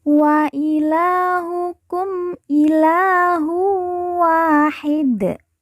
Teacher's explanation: dua harakat karena di depannya terdapat Alif wa ilahukum ilahu Wahid Dal di ujung kita sukunkan atau kita matikan karena wakaf atau berhenti